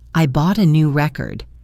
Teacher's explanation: As a noun, I bought a new record. The stress is on re.